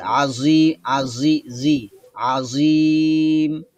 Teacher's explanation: জীববার আগা সামনের উপরের দাঁতের আগাতে স্পর্শ করবে জমজম একটা আওয়াজের মত হবে ঠিক আছে আচ্ছা মাখরাজ খেয়াল রাখতে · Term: জ এর মাখরাজ